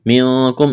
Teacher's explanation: اخفا کریں گے، نون ساکن کے بعد کاف ہے